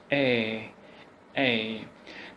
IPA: eə